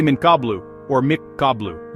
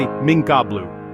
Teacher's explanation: Instead you hide it. You lightly touch your tongue to the place where the noon sound is made, but don't finish the sound. You create a light nasal sound, gonna as you get your mouth ready to say the next letter.